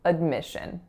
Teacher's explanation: second syllable is our winner, it's a lax I